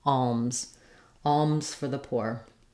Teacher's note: going from the ul, alm, closing to the m, and then opening again for the z